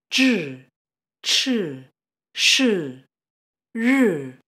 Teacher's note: these next four initials, zhi, chi, shi, ri, are called retroflex consonants.